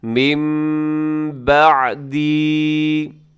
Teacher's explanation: یہاں نون ساکن کے اندر آپ کو ایک چھوٹا سا میم بھی نظر آ رہا ہے، تو اسے کہا جاتا ہے، اس یہاں جو قانون لگتا ہے اسے کہا جاتا ہے اقلاب۔ نون ساکن کے بعد جب با آتا ہے تو نون ساکن کو میم کے ساتھ چینج کر دیتے ہیں،